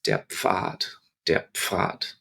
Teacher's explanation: So what you do is you go into that position to say the letter F and you close your lips and you blow out the F. So there's a little pop.